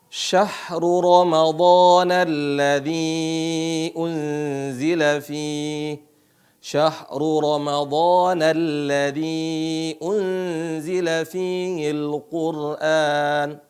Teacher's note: ketika melihat dalam keadaan dalam keadaan fathah rnya dibaca tebal